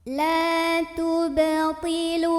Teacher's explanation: Karena ada huruf qalqalah yaitu ba, yang sukunnya ini sukun asli dan berada di tengah-tengah bacaan. Maka cara membacanya huruf ba ini kita pantulkan dengan pantulan yang kecil dan tetap mengalir. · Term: qalqalah sughra